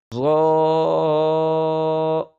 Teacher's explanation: غا کو پڑھتے وقت ہونٹ گول نہیں ہوں گے، ہونٹ سیدھے کھلیں گے اور منہ کے اندر سے آواز موٹی ادا ہوگی